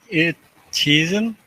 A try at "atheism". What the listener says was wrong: Yeah, let me hear the th a little more.